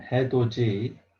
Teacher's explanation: sound with e so we have to read hedo d but the d sound here changes to j sound